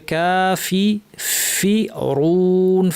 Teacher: ফাতে যেন প্রচুর আওয়াজ বাতাস থাকে, ফ্যাস ফ্যাসে আওয়াজ হবে। অরু এটাকে ভারী করে বলতে হবে।